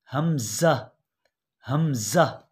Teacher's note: और इसी तरह हमज़ा, इन दोनों का हा और हमज़ा इनका मखरज एक ही है। और हमज़ा भी हलक के निचले हिस्से से यानी इंतहाई हलक से अदा होगा